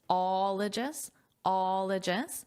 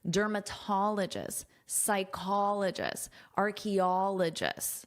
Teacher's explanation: stress is on the first O before ologist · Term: syllable stress